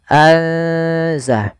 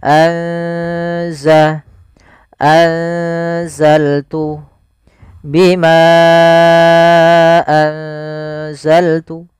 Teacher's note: ikhfa di antara keduanya, sehingga nunnya samarkan ke zai. Azah. Atau biasa lebih mudah untuk memperingatnya pakai ng atau ang gitu ya.